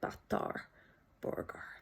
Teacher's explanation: It is a stop, but it's not a t stop with the blade of the tongue and the alveolar ridge. It is in fact a dental stop, the tongue against the teeth.